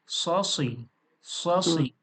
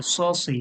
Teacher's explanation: এই সদের আওয়াজটা একটু মোটা করে হবে, স সুই। যেহেতু এটা আমি বলেছিলাম পুর অক্ষর, এই পুর অক্ষরটা একটু মোটা করে হবে।